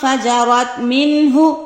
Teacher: نون ساکن کی آواز کو پرومیننٹ کیا جائے، پڑھا جائے، لیکن اس کو نہ لمبا کیا جائے. لمبا کریں گے تو غنہ ہو جائے گا، چھپانے کی کوشش کریں گے تو اخفا ہو جائے گا. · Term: اظہار